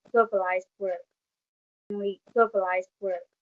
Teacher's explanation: In the video, my subject pronounced the word world as world, where she drops the r sound before the consonant L. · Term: non-rhoticity